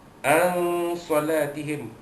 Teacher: An salatihim, nun mati jumpa sad, hukumnya ikhfa haqiqi, menyembunyikan bunyi nun mati bertemu dengan sad